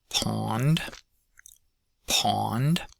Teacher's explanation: we've got pond, pond, pond, which has the aw vowel in it, and is actually a minimal pair, just one sound difference with the first example up here, pond.